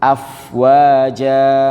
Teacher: Di fa ini sifatnya rokhawah juga Bapak Ibu, ngalir ya, agak panjang dia.